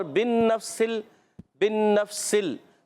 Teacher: با کو نون سے ملائیں گے، نون مشدد، ایک الف کا غنہ ہوگا ، نون کو فا سے ملائیں گے، نون فا زبر نف،